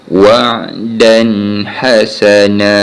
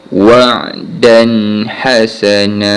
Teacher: Huruf ha di antara huruf izhar khalqi. So, kita baca dengan bacaan izhar khalqi, jelas tanpa dengung